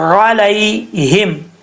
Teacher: عین کو آپ نے اپنے مخرج سے ادا کرنا ہے، حمزہ کی آواز نہیں آنی چاہیے، علیہم، ہاں بھاری ساؤنڈ کے ساتھ پڑھا جائے گا، اس کو بریک نہیں پڑھنا۔